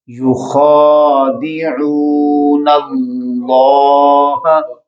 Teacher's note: یہ 7 حروف جن کو ہمیشہ موٹا پڑھا جاتا ہے، خا موٹا پڑھے جانے والوں میں سے ہے، لہٰذا اس کو اب جب کھینچیں گے تو اس کا جو تلفظ ہے وہ بھی موٹا پڑھا جائے گا